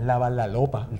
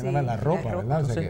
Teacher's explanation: a principio de palabra no cambiamos la r por l